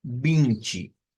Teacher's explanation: Entonces, dejémoslo con la N, que creo que es más fácil comprender. Luego, esa T y esa SH la vamos a hacer como una CH y luego una I. Entonces, esto es como que digamos Vinci, como que lo leyésemos de esa forma.